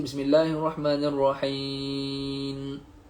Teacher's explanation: Mulut terbuka, lidah dekat gusi atas. Tu huruf nun.